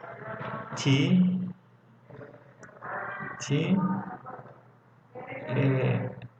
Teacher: The place of articulation is alveolar. The manner of articulation is plosive. The voice is voiceless.